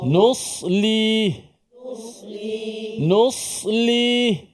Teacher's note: Cuma bezanya sa dengan sin, sa tebal saja.